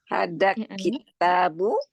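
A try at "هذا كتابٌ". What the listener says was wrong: Hadza kitabun. Jangan kitabun, kitabun, bun. Tanwin. Hadza kitabun.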